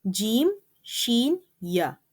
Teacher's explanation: Raising the tongue against the hard palate produces Jim. In short, Jim, Sheen, Ya are pronounced from middle part of the tongue when it touches to the middle part of the palate. This group of 3 letters, Jim, Sheen, Ya, are known as Shajariyyah letters as they emanate from a place in the tongue known as Shajar Al Lisaan.